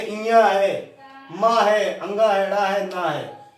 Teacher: इनका अपने अपने उच्चारण स्थान तो है ही, साथ में नासिका का भी सहयोग होता है, नासिका से भी बोले जाते हैं, इसीलिए इनको नासिका च लगा है, च माने और, तो इनका नासिका से भी उच्चारण होता है।